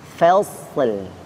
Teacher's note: Yang kedua lamnya ikut tebal, fasl ya. Di sini fa-nya tipis, sadnya tebal, lamnya tipis.